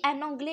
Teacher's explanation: il se termine par S, mais la consonne S n'est pas prononcée